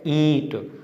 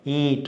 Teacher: इसका उच्चारण मुख और नासिका यानी नाक दोनों से होता है। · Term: अनुनासिक